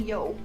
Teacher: hi up eggs have a runny Yol but that second time she didn't say the L the second time it sounded like she just made a long o